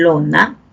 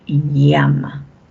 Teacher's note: la lengua se va curva y el aire va a salir por los costados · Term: laterales